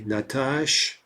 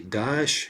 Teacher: basically we just want to drop the ah vowel